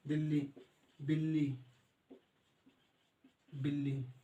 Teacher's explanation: जब एक ही ध्वनि का द्वित्व हो जाता है मतलब 2 बार आ जाता है, तो उसे युग्मक ध्वनि कहते हैं